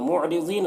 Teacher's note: मुअरिज़ीन रॉ को बारीक पढ़ेंगे, ज़ाद को पुर पढ़ेंगे।